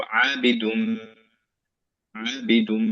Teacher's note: এরপরে আবিদুন, এইখানে দুন হতো যদি আমি থেমে যেতাম, কিন্তু আমরা কন্টিনিউ করছি বলে আমাদের এদগাম হয়ে যাবে নুনের সাথে মিম, এর জন্য আমরা মিমটাকে গুণা করে ফেলবো